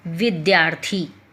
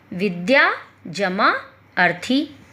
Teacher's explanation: विद्या में क्या है, या आ है, और दूसरे शब्द का जो पहला अक्षर है वो क्या है, छोटा आ है। तो बड़ा आ और छोटा आ मिला करके एक नई ध्वनि बन गई, बड़ा आ, यानी दीर्घ स्वर में कन्वर्ट हो गई।